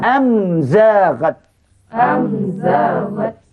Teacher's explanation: yang ketiga tadi nama hukumnya izhar syafawi Kenapa kataan izhar sebab mimnya bunyinya nyata terang dikeluarkan pada makhlatnya tanpa ada dengung